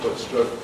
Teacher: The crucial point is no contrast between foot and strut, so they rhyme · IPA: /fʊt/-/strʊt/